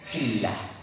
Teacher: Karena di sini ba berharokat kasroh, maka lam jalalah yang ada di sini maka dibaca dengan bacaan yang tarqiq atau tipis.